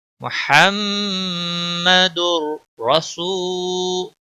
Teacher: تنوین کے بعد حروف یرملون کا را آیا ہے، ادغام ہوگا بلا غنہ